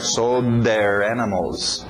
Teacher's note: O D entrando no TH de their